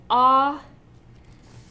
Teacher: So bright ah, that just means your tongue is really open because it's a low or open vowel, but it's bunched up more forward than back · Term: bright ah vowel